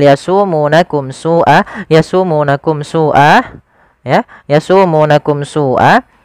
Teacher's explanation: Di sini ada bacaan izhar syafawi, yaitu adanya mim mati bertemu dengan huruf sin, maka dia harus dijelaskan suara mimnya. Yasumunakum su'a, tidak boleh yasumunakum su'a, tidak boleh ditahan, tapi dia dibaca dengan jelas suara mimnya.